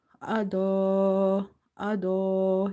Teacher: You have to stretch up to 2.5 alif.